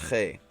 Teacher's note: And so Che, I'm just going to write it down as a KH. And it's very much a scratchy back of the throat sound